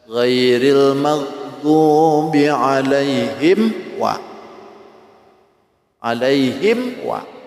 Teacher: Mim mati ketemu dengan waw dan fa, itu izharnya harus betul-betul dipotong. Sebab mim dengan waw, mim dengan fa itu hurufnya hampir sama keluarnya makhumnya, makharijnya. · Alaihim wa. Itu mim mati ketemu waw. Jangan ditahan. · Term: izhar syafawi